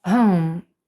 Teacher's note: H вимовляється з придихом і навіть ближче до г